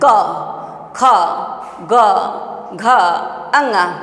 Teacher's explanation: क हम बोलते हैं तो पूरे कंठ से बोल रहे हैं।